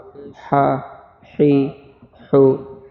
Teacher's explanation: یہ حلق والی حا ہے